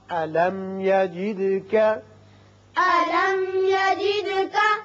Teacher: میم پر اظہار ہوگا، دال کی صفت قلقلہ